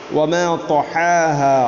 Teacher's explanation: ത്വാഇനെ ഉച്ചരിക്കുമ്പോൾ അതിൻ്റെ നാവിൻ്റെ മധ്യഭാഗം അണ്ണാക്കിലോട്ട് ചേർന്ന് വരണം. അങ്ങനെ തൊഹേഹ എന്ന് പറയുമ്പോൾ ഹാഇൻ്റെ ഉച്ചാരണം പ്രത്യേകിച്ച് ശ്രദ്ധിക്കേണ്ടതാണ്.